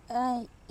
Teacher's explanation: ई जो है वो तालु से होता है